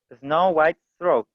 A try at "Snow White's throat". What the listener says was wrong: Ya, esta S tiene que estar. Snow White's throat.